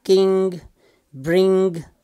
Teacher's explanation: back of that tongue is touching the soft palate and this passage to the nose is open as you can see here passe to the nose is open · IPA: [ŋ]